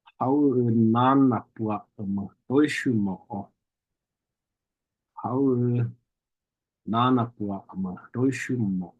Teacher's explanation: Some people spell this word just like our English word how, How, because oftentimes that glottal stop there, it does kind of just get glossed over and it kind of just sounds like you're saying how